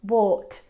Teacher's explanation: in British English, the ah of bought sounds different. It's more rounded. It's more like bought.